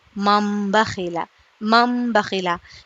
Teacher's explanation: نون ساکن ہے اس کی آواز غنّے کی طرح ہوں گی اور یہ من نہیں ہوگا بلکہ مم ہو جائے گا · نون کو میم سے بدل کر غنہ اور اخفا کے ساتھ پڑھیں گے، اس کو اقلاب کہتے ہیں، جیسے کہ مم بخیلا، مم بخیلا۔